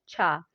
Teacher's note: स्पर्श संघर्षी महाप्राण व्यंजन जो है वह है छ